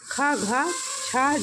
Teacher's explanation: ऐसे व्यंजन जिनको बोलने में अत्य अधिक प्रयत्न करना पड़ता है और बोलते समय मुख से अधिक वायु निकलती है उन्हें महाप्राण व्यंजन कहा जाता है।